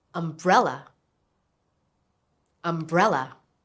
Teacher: Do you hear the stress? It's on the second syllable.